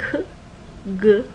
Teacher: Velar sounds are further back, where the back of your tongue gets raised to this velar, soft palate area